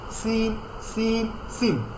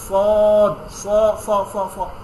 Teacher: সদের সম্পর্ক আপনার এখানে না, দাঁতের মধ্যে না, এটা হচ্ছে জিহ্বার যে পাশগুলো, পাড়, এটার সাথে উপরের সম্পর্ক। সদ, এখানেও হালকা একটু সাউন্ড হবে, বাট এখানে মোটা করে।